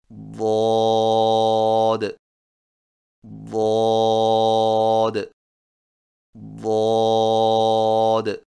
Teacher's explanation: زبان کے موٹے کنارے کو اوپر والی داڑھوں کی جڑ پر آہستہ آہستہ نرمی سے لگا کر خوب موٹی اور دراز آواز میں پڑھیں